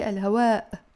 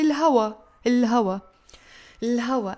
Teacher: in Lebanese Arabic we don't pronounce the همزة when it falls at the end of your word